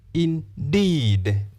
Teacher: The first syllable has the short vowel sound e. The second syllable has the long vowel sound E.